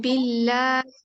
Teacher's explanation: अल्लाह के कलाम से पहले जब जेर आ जाए तो फिर अल्लाह का कलाम बारीक पढ़ा जाता है